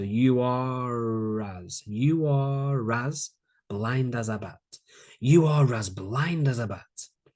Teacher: a bit of intrusion the intrusive ER sound